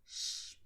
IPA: ʃ